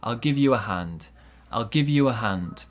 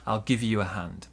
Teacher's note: small stress on give big stress on hand